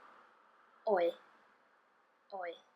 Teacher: a sound similar to the oi sound, but with less of that E at the end. So it's more like oi, oi.